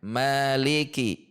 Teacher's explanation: jalur syatibiyah atau riwayat yang kita gunakan ini dibaca panjang dua harakat. Mad thobi'i.